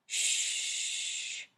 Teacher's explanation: When you say shh, you can continue to make the sound for a long time.